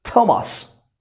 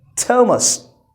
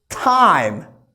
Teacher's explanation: True T, it's going to be like this, that the tip of your tongue comes beyond the upper teeth and you're going to pronounce it like t.